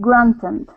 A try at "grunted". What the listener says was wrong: so you're putting that T, you're switching your T and your N, saying grunted, it is grunted, grunted.